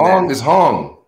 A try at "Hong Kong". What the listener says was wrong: Putting the wrong emphasis on the wrong syllable there. Hong Kong. That's how you pronounce it.